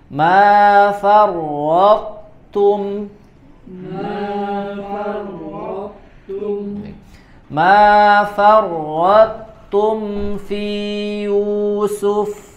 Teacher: To-nya tebal dulu, baru tipis di huruf ta-nya.